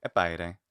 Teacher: I'm putting the higher pitch, on the first syllable